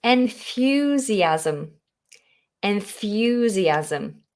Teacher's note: That wonderful TH. You have to get the tongue between the teeth.